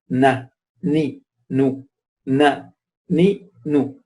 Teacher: pronouncing the noon has two aspects, from the tongue and from the nasal cavity. So when they come together, the correct sound of noon is pronounced.